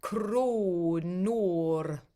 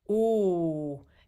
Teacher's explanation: It's a very forward ooh.